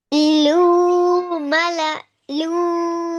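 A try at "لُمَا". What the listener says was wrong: फिर खींच रही हैं आप, लाम पेश लू मीम जबर मा लूमा। आप कह रही है ना लूमा जा, लू गलत है, लूमा।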